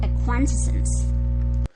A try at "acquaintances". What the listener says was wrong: acquaintances. So the ES creates an additional syllable.